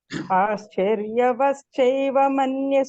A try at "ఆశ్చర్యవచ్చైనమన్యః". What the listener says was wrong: Third line లో మాత్రం ఆశ్చర్య వచ్చైవా అంటారు మేడం, వచ్చైనా మేడం అది ఆశ్చర్య వచ్చైనా అంతే సరిపోయింది. వచ్చైనా వచ్చైనా వచ్చైనా.